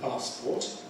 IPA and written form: ˈpɑːspɔːt (passport)